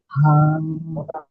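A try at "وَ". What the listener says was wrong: এটা ওয়াও, হা নয়, ওয়াও, দেখেছেন, হা হবে না, এটা ওয়াও, বুঝতে পেরেছেন।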